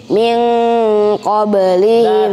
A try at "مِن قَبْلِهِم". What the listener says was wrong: لا تجعل النون إظهار، هذا من قبلهم لا يصلح. نحن قلنا دائما يوجد إخفاء، إذا تقول من هذا إظهار النون صح؟